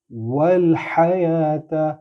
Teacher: ہا جو ہے وہ ہا گلے سے زور لگا کے آپ نکالیں گے۔ عربی میں دو ہاں ہیں، ایک ہا ہے اور ایک ہا ہے، ہا نہیں کرنا، ہا کرنا ہے۔